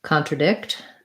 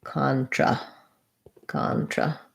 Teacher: contradict stress is on the last syllable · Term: secondary stress